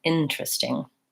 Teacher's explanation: So that E is silent. I go right from the T to the R